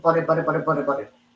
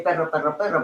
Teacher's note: the idea is the bouncing of the tongue against the roof of your mouth. You are rolling an R already.